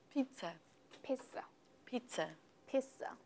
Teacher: The stress is, in fact, on the first syllable.